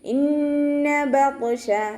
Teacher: ത്വ ഇസ്തിഅലാൻ്റെ ലെറ്ററാണ്, ഇഖ്ബാക്കിൻ്റെ ലെറ്ററും കൂടിയാണ്. നല്ലോണം തഫ്ഹീം ചെയ്യുക. അതോടൊപ്പം തന്നെ നാവിൻ്റെ ബാക്ക് നല്ലോണം മുകളിലേക്ക് ഉയർത്തി കൊടുക്കുക.